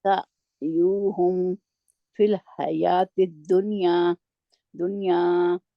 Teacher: سعيهم في الحياة سعیہم سعيهم في نہیں کرنا، جھٹکا نہیں دینا، جی حمزہ نہیں ہے، آئین ہے، س- نرمی سے آئین کو پڑھنا ہے۔